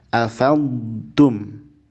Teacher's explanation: Yang pertama menghadapi ta, afamtum, bukan afattum. Jangan lebur ke ta, tapi afamtum, dodnya dialirkan rukhawah dan istitolah.